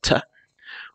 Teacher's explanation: The voiceless alveolar stop, the t